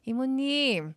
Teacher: It shouldn't be like 이모님, but it'd be 이모님. Kind of drag out the last vowel.